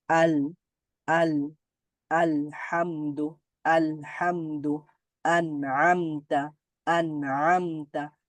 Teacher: এগুলো উচ্চারণ করার সময় কিছুটা আওয়াজ জারি থাকবে, পুরোপুরি জারি থাকবে না এবং পুরোপুরি বন্ধ হয়ে যাবে না। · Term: মোতাওয়াসিতা